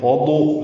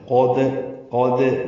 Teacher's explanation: دال باریک پڑھنا ہے اور قلقلہ کرنا ہے